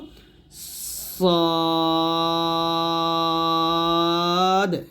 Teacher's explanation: জিহ্বার আগার সামনে নিচের দুই দাঁতের মাঝখানে লাগিয়ে সদ আমরা মোটে করে উচ্চারণ করব